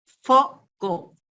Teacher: para decir la F, digamos, de feo, de foco, es labiodental, porque si ustedes a ver pronuncian foco, entonces imagínense cómo están haciendo, o en un espejo véanse cómo están haciendo sus labios para decir foco, para que salga la F.